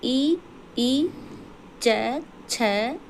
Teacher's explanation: तालू का जो कठोर भाग होता है वहाँ हमारी जीभ जाके टच करती है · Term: तालव्य